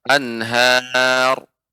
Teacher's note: Ya, ada ra yang disukunkan sebelumnya berharokat fathah. Maka huruf yang berharokat fathah, maka ra dibaca dengan tebal sebagaimana anhar.